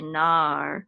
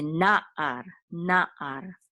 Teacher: And again, this ayin, because it's a separate syllable from this, we're going to make sure we have, there's a distinct separation between the first syllable and the second syllable. So we're not going to say nar, we're going to say na'ar, na'ar, okay?